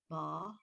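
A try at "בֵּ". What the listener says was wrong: Be. It's not an ah.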